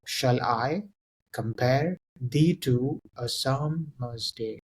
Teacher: So, shall should be said in a lower unstressed way, and I should be said in a more stressed sort of way. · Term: iamb